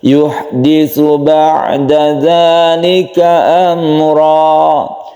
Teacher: yuhditu ada tsa yang tipis ha yang harus bersih am mim mati bertemu dengan ro kita sebut dengan izhar syafawi